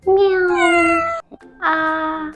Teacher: The first tone is a higher flat tone.